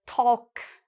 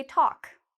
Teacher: We don't pronounce the L.